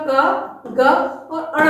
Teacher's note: जिनके उच्चारण में सीमित वायु निकलती है, यानी कम वायु निकलती है, उन्हें हम अल्प प्राण कहते हैं। ऐसी ध्वनियां ह रहित होती हैं।